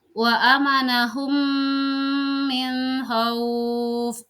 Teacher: Sekarang nomor 2, idgham mutamatsilain, yaitu jika ada mim sukun bertemu dengan huruf mim atau idgham mimi atau juga sering disebut dengan idgham misli. Cara bacanya yaitu memasukkan huruf mim ke dalam huruf mim kedua disertai gunnah, kira-kira 2 rakaat.